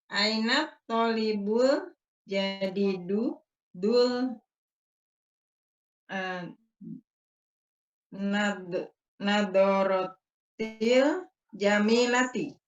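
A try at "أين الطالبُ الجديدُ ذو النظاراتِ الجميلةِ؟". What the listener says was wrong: Ahsan, pakainya zu. Cuma intonasinya coba berikan pertanyaan, Bu. Aina talibul jadidu dun nazaratil jamilati.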